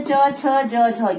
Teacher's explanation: तालव्य वर्ग। इसमें हमारी जो जीभ है वो हमारे तालु को टच करती है, हमारे तालु को छूती है।